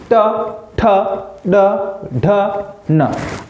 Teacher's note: जो जीभ लग रही है ना, वो आपके मसूड़ों के आसपास लग रही है। और जब जीभ आपके मसूड़ों के आसपास लगती है तो उसे अपन कहते हैं मूर्धन्य।